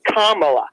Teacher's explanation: it would have a Accent on the first a